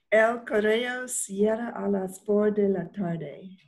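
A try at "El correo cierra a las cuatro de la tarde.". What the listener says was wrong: A las 4. 4. Cuando vemos los números, when we see those numbers, sí. El cerebro. Quiere decirlo en inglés.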